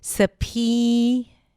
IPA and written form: səˈpiːnə (subpoena)